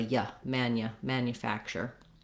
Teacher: to be reduced to more of a yeah mania manufacturer because it's a reduced syllable it's not stressed and we're going to have that vowel schwa there notice though that the n-u combination here that we do have